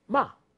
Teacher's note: It starts from a high pitch and then falls. Ma. Fast.